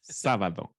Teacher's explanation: O's in Portuguese at the end have this U sound like a double O in English, like in mu.